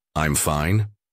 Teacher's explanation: said with a rising intonation and a somewhat strained tone. "I'm fine?" Questioning, perhaps not fine, seeking confirmation, said with a flat low pitch and slow pace.